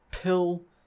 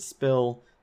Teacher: Finally, in the word pill compared to the word spill, again we can hear that puff of air in pill, but no puff of air on the P in spill